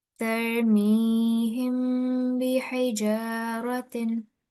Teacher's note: So 2-second nasal sound because this is ikhfa of mim sakin. · But ikhfa of mim sakin is, we look at the letter after mim sakin, and if it's the letter ba after, then the sound of mim sakin will be softly prolonged for 2 seconds or 2 counts. And we call this ikhfa shafwi.